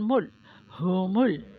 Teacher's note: ہا کا دھیان رکھیں، ہومل، لام کو کلکلا نہیں کرنا ملاتے ہوئے